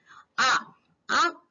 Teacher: आ का उच्चारण करते समय विवृत्त मतलब पूरा मुख खुल जाता है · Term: विवृत्त स्वर